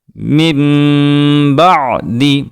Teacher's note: نون ساکن کے بعد لفظ با آیا ہے تو ہم نے نون ساکن کی آواز کو میم سے بدل دیا ہے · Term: اقلاب